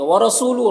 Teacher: را کے اوپر زبر ہے، را کو پر پڑھیں گے